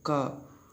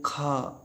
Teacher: मुंह से का बोलो तो कम निकलती है मुंह से हवा, और बोलते हैं खा तो और ज़्यादा हवा निकलती है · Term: अल्प प्राण